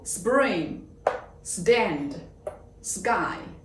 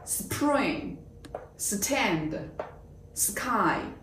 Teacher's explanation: 当▁p、t、k▁出现在▁s▁的后面时▁，p、t、k▁要发成与之相对应的浊音。